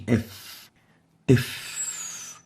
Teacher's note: It's categorized as a labiodental because it articulates by bringing the lower lips with the teeth